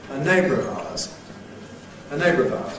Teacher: that syllabic [ r̩ ] is a candidate to lose its syllabicity by compression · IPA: [ ə ˈneɪbrəv aʊəz ]